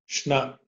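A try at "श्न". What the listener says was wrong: Shna. Like in the word Krishna.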